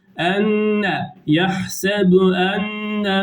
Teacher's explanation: nunu biraz tutuyoruz, burundan ses gelecek genizden